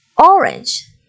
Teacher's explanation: the word orange, the stress is on the first syllable